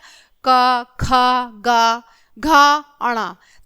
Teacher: इनका उच्चारण कंठ से होता है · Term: क वर्ग